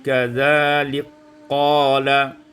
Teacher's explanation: diidghamkan kaf pada qaf menjadi kadzalik qala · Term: idghamul kaf fil qaf